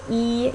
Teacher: say them each um your tongue is going down so e your tongue is very high so it's a high vowel